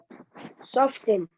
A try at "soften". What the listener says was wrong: No, don't spell T. It is silent, okay? T is silent, okay? Soften.